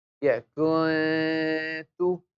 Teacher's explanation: On the kaf, on the kaf, dhamma is there, so you make your lips round. On the ta, dhamma is there, we make the lips round.